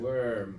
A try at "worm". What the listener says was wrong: Good job, dude. I really heard it and saw it.